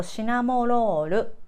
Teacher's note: Even I wrote it down in an R. Japanese, when we pronounce, we don't have an R sound, so we say more L sound.